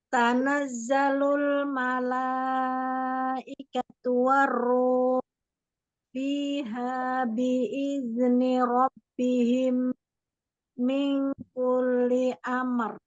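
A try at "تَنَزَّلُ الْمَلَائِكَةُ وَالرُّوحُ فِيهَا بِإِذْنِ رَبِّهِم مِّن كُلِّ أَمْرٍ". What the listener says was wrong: Tapi jangan diputus-putus ya, Bun ya. Tanazzalul malaikatu warruhu fiha biizni rabbihim. Min kulli amr.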